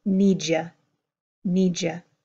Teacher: the D and the Y coming together here for need you to become need ya